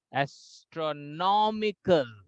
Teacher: Okay, so astronomy, tro will have high pitch, but when we say astronomical, then nom will have the high pitch.